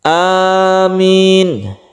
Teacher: a-nya panjang min-nya juga panjang